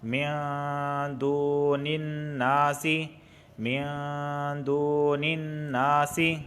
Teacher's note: یہاں پر دیکھیں الناس پہ تشدید آئی ہے، نون پر تشدید، اور نون مشدد ہمیشہ غنہ ہوتا ہے، اس وجہ سے دون یہاں پہ میں غنہ کر رہا ہوں